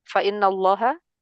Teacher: Fa innallaha fa in itu nun bertasydid, gunnah mustadadah · lafzul jalalah dibaca tafhim karena sebelumnya berharakat fathah